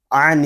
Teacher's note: نون میں شدت کو غننے کے ساتھ پڑھیں گے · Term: غنہ